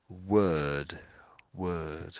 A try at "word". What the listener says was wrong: But when it's next to the W, it seems to make the W die. It doesn't sound quite right when you're saying it,